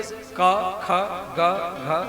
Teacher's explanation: ये 5 अक्षर कंठ से यहां से उत्पत्ति होता है, इसलिए इसको बोलते कंठ वर्ण · क ख ग घ य पांच अक्षर कंठ से यहा से होता है